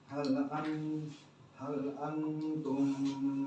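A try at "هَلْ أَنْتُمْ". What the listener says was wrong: Kurang lama. Hal tahan lebih lama.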